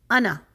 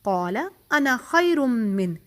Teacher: یعنی ملا کر پڑھتے ہوئے ہم انا پر صرف ایک حرکہ دیں گے، اونلی 1 کاؤنٹ، انا بس. ٹھیک ہے، کیسے؟